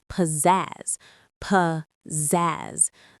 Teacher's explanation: The stress is all on that last syllable, zazz. You say it with energy.